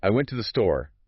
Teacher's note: The stress is on went and store. This to the is super quick and quiet.